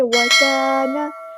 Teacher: واستکبر وکانا، کاف باریک ادا کرنا، الف مد آ گیا تو مد اصلی کریں گے. وکانا، نون کے زبر کو لمبا نہیں کریں گے